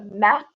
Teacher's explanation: on a un stop tout au derrière de la bouche quand c'est mat